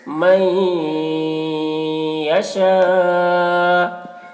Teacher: یؤتی الحکمت، حکمت من، یہاں پر نون ساکن کے بعد یا ہے حروف ادغام میں سے، تو نون کو یا سے ملا کر غنہ کے ساتھ پڑھیں گے، اس کو ادغام ناقص کہتے ہیں۔ من یشاء، یہاں پر حرف مد کے بعد حمزہ اسی کلمہ میں ہے تو مد متصل ہوگا، مد متصل کو 3 یا 4 الف کے برابر کھینچ کر پڑھتے ہیں۔